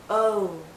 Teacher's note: more open o think of the letter o o o but as we come to the end of this vowel sound our lips become even tighter it finishes actually with a slight ooh sound